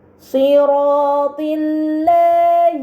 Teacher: Pada kata siratillahi terdapat huruf lam pada lafaz Allah sebelumnya harokat kasrah, maka lam tersebut dibaca secara tipis.